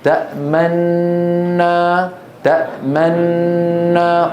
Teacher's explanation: بتسكين النون الاولى وادغام في الثانيه مع ضم الشفتين من غير صوت بعيد البدء بنطق النون المدغمه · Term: الاشمام